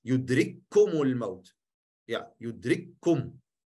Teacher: En de volgende is ook een kef, dus je spreekt uit als één kef.